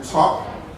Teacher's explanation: Eastern New England, folk area of Boston, has the vowel ah in top